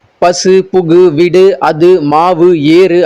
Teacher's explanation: ஒரு சொல்லோட இறுதியில வர அந்த ஊன்ற உகரம் வந்து தனக்குரிய மாத்திரை அளவில இருந்து குறையாம அப்படியே முழுமையா ஒலிக்கிறது தான் முற்றியலுகரம்